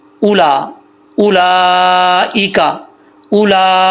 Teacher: हमजा के आगे वाव है लेकिन वाव पढ़ेंगे नहीं।